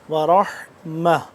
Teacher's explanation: گے، صلوات من ربہم ورحمہ، من ربہم ورحمہ، را کو موٹا، حا کو حلق کے درمیانی حصے سے نکالیں گے